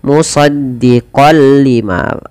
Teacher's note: Maka cara membacanya sama, yaitu dengan bacaan idgham bila gunnah. Dengan memasukkan tanwinnya kepada huruf lam. Idgham itu pada dasarnya adalah memasukkan tanwin atau suara nun sukun kepada huruf setelahnya, dan di sini kita masukkan kepada huruf lam.